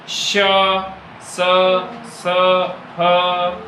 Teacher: अब क्या होता है कि जब हम कुछ व्यंजन ऐसे होते हैं कि जिनका हम उच्चारण करें तो हमारे मुख से निकलने वाली वायु जो है थोड़ा सा गर्म हो जाती है क्योंकि उसमें घर्षण ज्यादा लगता है। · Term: उष्म व्यंजन